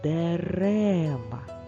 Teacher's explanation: в слові дерева звук е після р в другому складі чуються досить добре адже він під наголосом